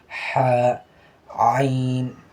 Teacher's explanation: جس طرح سے ہم ہا پڑھے حلق سے، حلق کے درمیان سے، تو اسی طرح سے عین بھی وہیں سے ادا ہوتا ہے